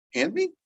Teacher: You hear the D in there? No, it's kind of just gone. And this happens quite regularly.